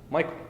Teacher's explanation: It's a two-syllable foot in which the stress comes in the beginning and the second syllable is unstressed. So Francine would be iambic, Michael would be trochaic. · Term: trochee